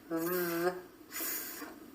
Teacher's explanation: the V sound and F sounds, both made with the top teeth resting against the bottom lip.